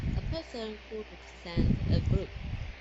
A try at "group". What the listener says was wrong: Okay, group, not gloop.